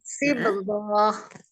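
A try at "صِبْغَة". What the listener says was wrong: goinya tidak dipanjangkan. Coba lagi.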